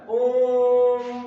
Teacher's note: लेकिन प्लुत स्वर आ गया एक, प्लुत स्वर में हुआ कि सबसे ज्यादा समय लगेगा यानी तिगुना लगेगा